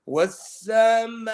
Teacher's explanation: So, wasama 4 to 5 haraka, not even 6.